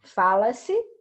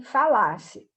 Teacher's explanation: A sílaba tônica aqui, ó, no fala-se, é o fá. Aqui, se eu falasse, já é o lá.